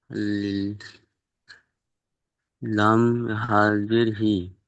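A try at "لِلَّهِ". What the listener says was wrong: জি না, লাম খাড়া যাব তাসদিদ ওয়ালা অক্ষর দুবার উচ্চারণ হয়। লাম খাড়া যাবার ল।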